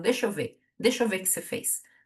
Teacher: R final de palavra, isso é super comum também, desaparece